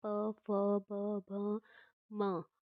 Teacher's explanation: हमारे होठ आपस में स्पर्श हो रहे हैं, इसलिए इसका उच्चारण स्थान क्या हो जाएगा? ओष्ठ हो जाएगा